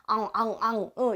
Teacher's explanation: 말랑말랑한 입천장과 혀 뒤에서 소리가 나기 때문에 여린 입천장 소리